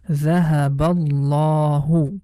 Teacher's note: in the name of Allah, the la sound we have to pronounce with heavy sound. If the previous letter has fatha or dhamma, in both cases we pronounce letter lam in the name of Allah with heavy sound.